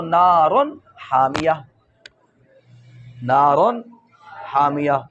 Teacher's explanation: نون تنوین کے بعد حروف حلقی میں سے ہا واقع ہے تو نون تنوین کو اپنے مخرج سے بغیر غنہ کے ادا کیا